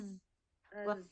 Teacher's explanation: huruf zai mempunyai sifat rokhawah mengalir ya suaranya